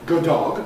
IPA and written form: ˌgʊˈdɔg (good dog)